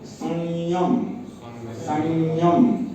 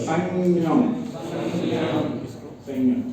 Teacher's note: उसका उच्चारण य के ऊपर थोड़ा नासिका के साथ लेके ही बोलना पड़ेगा।